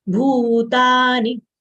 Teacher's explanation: Bhutani, bhu long sound, ta long sound, ni short sound. As you can see macrons over U and A letters, that denotes that these are long sounds.